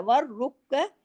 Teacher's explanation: اوپر کھڑی زبر ہے، والعاکفین والرکع السجود، والرکع السجود، رکع، والرکع، ور پہ تشدید ہے، ڈبل را ہے اور موٹا بھی کرنا ہے